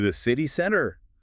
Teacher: I can hear that rise at the end. It goes up.